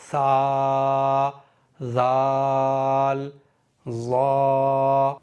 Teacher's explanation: ये ज़बान की नोक ऊपर के इस सनाया उलिया के किनारे यहाँ पर टच होगी, इस तरह से सा, और ज़बान की नोक थोड़ी सी दांतों से बाहर निकली रहेगी